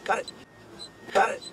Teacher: we can hear an American T, which makes the T morph into a soft D. This happens when you have a T sound between two vowel sounds, even if they are in separate words, as it happens here.